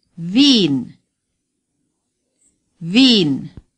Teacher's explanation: the W in German is pronounced like our V in Vienna. The IE is a long sound. Long I, as in, Berlin.